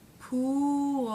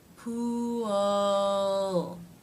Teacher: So the tongue has to pull back a little bit. The tip doesn't touch anything before the tip moves up to make the L sound. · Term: dark L